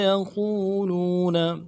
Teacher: لو میں بھی واو مدہ ہے، اس کو بھی ایک الف دال میں کھینچے